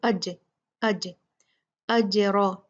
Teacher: ساکن ہے تو اس لیے ہم اس کو ذرا شیک کر کے، جھٹکا دے کے مخرج سے ہلا کر پڑھیں گے۔ اج، اج، اج، را ہیوی ہوگا، مفخم ہوگا۔